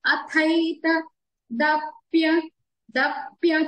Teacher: తత్థంలో రెండో థ. థేకి అది మహాప్రాణాక్షరం ఒత్తి పలుకుతాము. థేకి ఐకారం ఉందండి.